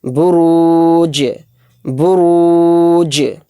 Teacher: جیم کے اوپر جو جزم ہے یہ حروف قلقلہ اس میں ہو رہا ہے، کیوں؟ کیونکہ جیم حروف قلقلہ کے 5 حروف میں سے ایک حرف ہے، تو اس کی آواز اس طرح سے نکالیں گے لاسٹ میں، بروج بروج۔